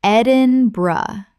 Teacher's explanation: 3 syllables with the burr collapsing to bruh.